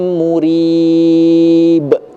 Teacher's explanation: di ujungnya harus ada pantulan karena huruf ba termasuk huruf huruf qalqalah